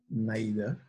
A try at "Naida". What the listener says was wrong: My name is Nida. N-A-I-D-A. Nida. And go on the I.